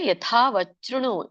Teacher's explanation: ಯಥಾ ಮಹಾಪ್ರಾಣ ಮತ್ತೆ ದೀರ್ಘ ಇದೆ